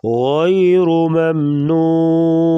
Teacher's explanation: غیر غین کو پور پڑھیں گے را کے اوپر پیش ہے را کو بھی پور پڑھیں گے